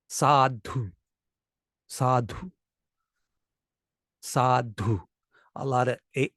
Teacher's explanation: a lot of air in the D sound and I think both one of them is long the first